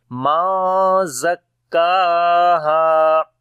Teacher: نون ساکن کے بعد زا گیا، اخفا ہوگا، یہاں پر لائٹ اخفا ہوگا